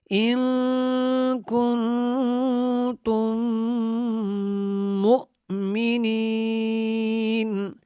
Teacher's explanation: ان کے اوپر اخفا آواز بالکل ناک میں